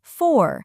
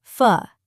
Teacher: the word for has a strong pronunciation for. But in normal speech, it is often pronounced as fu. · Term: weak forms